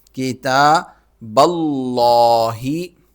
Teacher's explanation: کی تا با کو لفظ اللہ کے دوسرے لام کے ساتھ ملائیں گے، اور چونکہ با پر زبر ہے تو لام موٹا پڑا جائے گا